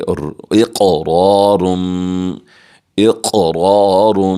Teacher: موٹا کر کے پڑھیں گے، اور یہاں پر کلکلا بھی ہے، قاف ساکن ہے، تھوڑی سی جنبش دے کر پڑھیں گے تاکہ جو آواز ہے وہ بعد میں ہمیں خود کو سنائی دے